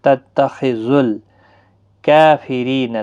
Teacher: ذال لام کے ساتھ ملے گا۔ تتخذل کافرین، لام ساکن کو ہلانا نہیں، را زیر کی وجہ سے باریک پڑھا جائے گا۔